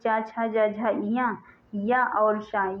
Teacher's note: चा, छा, जा, झा, इया, या और शा ये तालु से ही उच्चारित होते हैं। अगर पूछा जाए कि चा का उच्चारण स्थान क्या है तो तालु बताया जाएगा।